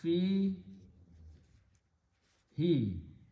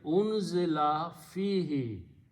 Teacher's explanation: If I pronounce them together, because of the fi sound, who is pronounced as he.